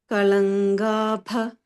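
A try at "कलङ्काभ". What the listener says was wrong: Kalankabha. We make it soft, right? so that ka also we have to not make it soft.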